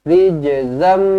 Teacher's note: zam jumpa dengan mim sabdu, terus rapatkan bibir, terus dengungkan dua harakat. Rijzam, idgham ma'al gunnah.